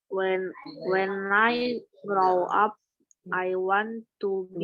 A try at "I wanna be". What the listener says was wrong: Wanna be. Nah, kalau penutur asli bahasa Inggris, mereka nggak pernah nih ngucapin I want to be, kecuali kalau lagi belajar. Tapi kalau dalam in everyday conversation, they usually say wanna. Want to becomes wanna. Want to be becomes wanna be.